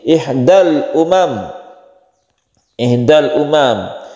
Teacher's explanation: Min ihdal umam, min ihda, ada nun mati bertemu dengan hamzah, tulisannya memang alif tapi ini adalah hamzah ya, nun mati bertemu dengan hamzah, disebut izhar halqi karena hamzah itu letak atau makhrajnya itu di tenggorokan atau halqi